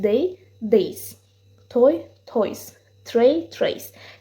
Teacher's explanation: Onların cəmi sait ilə bitən digər isimlərdə olduğu kimi s əlavə olunmaqla düzəlir və həmin sonluqda z kimi oxunur.